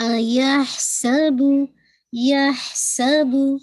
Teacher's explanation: ہمس بھی ہو رہا ہے، بہت واضح ہے. سین کی وسلنگ بھی واضح ہے اور با کی دمہ بھی گول ہے